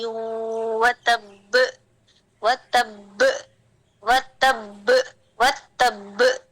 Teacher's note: پہلے با پہ میں اس نے سکون کیا، دوسرے والے با کو میں نے قلقلہ دے کے کھول دیا. یعنی کہ پریشر ہم نے یہاں پہ کریٹ کرے.